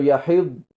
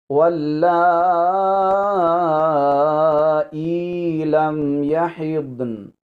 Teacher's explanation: نون کی آواز آئے اور نون ہلے بھی نہ، یعنی نون پر قلقلہ نہ ہو، نون کی آواز جو ہے وہ نون کا تلفظ ہوگا۔